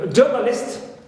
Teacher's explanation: Also, ist, like journalist, so list is neutral, but je, as usual, is stressed